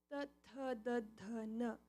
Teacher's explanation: So ta has that from your teeth, the back of your teeth.